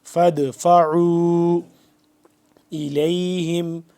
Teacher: فدفعوا عین واو مد پیش عو 2 سے 3 الف کے برابر, 2 سے 3 واو مدہ کے برابر لمبا ہوگا